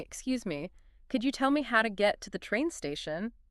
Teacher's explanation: with that rising intonation at the end, almost like a question